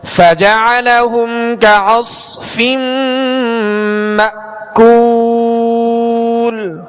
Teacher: حمزہ پہ جزم ہے، اس کو جھٹکے سے ادا کریں گے